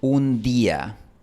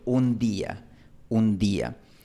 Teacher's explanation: Y este fonema se hace realidad, se pronuncia, por decirlo de manera informal, como una D dura, un cierre completo de la lengua contra los dientes, en estos casos, después de n, l o pausa. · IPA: [d]